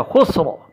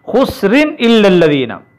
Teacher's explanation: حالت وقف میں یہ را موٹا پڑا جائے گا، خسر، اور اگر ہم ملائیں گے اس کو اگلی آیت کے ساتھ تو یہ را باریک پڑا جائے گا